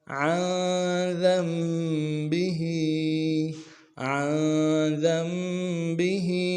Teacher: عین کو موٹا کریں گے، نون کے ساتھ ملانا ہے، نون ساکن غنہ کریں گے، ذال کو میم کے ساکن کے ساتھ ملانا ہے، میم ساکن میں غنہ ہوگا، جو چھوٹا سا میم ہے اس کے ساتھ ملائیں گے، نون کو نہیں پڑھیں گے۔